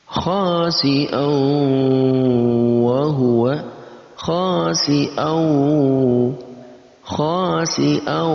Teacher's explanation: Ada digabungkan antara tanwin dan wawu, kemudian kita dengungkan keduanya. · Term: idgham bi gunnah